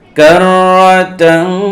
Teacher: অতএব এই নুন সাকিন এবং তানবিনের উচ্চারণকে নাকের ভিতরে নিয়ে একালি গুণনা করতে হবে, এটাকে ইখফা বলে। তো এই জায়গায় তাং নাকের ভিতরে নিয়ে একালি গুণনা করবো আমরা